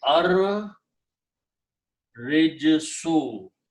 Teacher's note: Ra will kill the sound of Lam because it's a Shamsi letter. So you pronounce Ra twice and do not pronounce Lam.